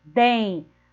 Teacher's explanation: o som dela é o som nasalizado, porque o N está no final da sílaba, ó. Den, a primeira letrinha da sílaba é o D e a última letrinha da sílaba é o N.